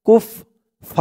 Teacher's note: থামার কারণে জবরের পরে খালি আলিফ এক আলিফ টানটা তিন আলিফ টান হয়ে যাবে ফা বলে তিন আলিফ টান দিয়ে এই র কে ধরবে রর